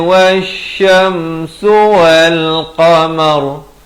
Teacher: kalau waqaf ra-nya dibacakan tebal